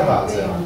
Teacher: la sillaba post-tonica cade e diventa Valser